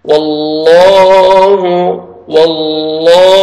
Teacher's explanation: کے نام میں جو مڈل میں لام ہے اس سے پہلے فتحہ آ رہا ہے تو لام کو موٹا کریں گے اور پر بھی کریں گے ، اور 1 سیکنڈ کھینچنا ہے، فتحہ الف صغیرہ ہے، واللہ